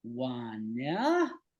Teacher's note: instead of the stress on the first syllable, it's on the second syllable. It's kind of lengthened in a way that makes it sound awkward.